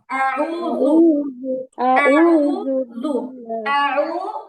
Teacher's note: জালটা হচ্ছে নরম, আপনার জালটা হয়ে গেছে শক্ত। আর হচ্ছে আউ- আউযু, জু জালটা নরম।